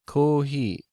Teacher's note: in Japanese there isn't a pure F sound and so there is no fee sound so instead of fee they go with he and O's are always long giving us kohi in English coffee